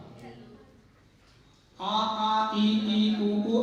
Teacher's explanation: अचों के ध्वनियों में कोई स्पर्श नहीं होता। आ ई उ आदि जो हम बोलते हैं, स्थान और कर्णों का संयोग उनमें नहीं होता। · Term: स्वर